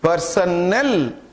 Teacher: when you pronounce option D, personnel, the stress is on null